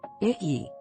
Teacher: Let it breathe. "Ee." That rising, slightly whiny tone is doing all the heavy lifting.